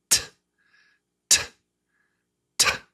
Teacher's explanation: So the tongue taps, they say taps, behind your teeth. T, t, t. right behind your top teeth.